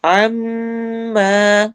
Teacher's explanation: میم پر غنہ اور الف مدہ